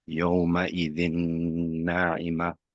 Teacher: So the dal has a tanween of nun sakin, followed by one of the letters of yarmalun with a nun straight after the shadda on top. So you would apply a ghunna for 2 harakat, and then it would sound like yawma idhin na'ima.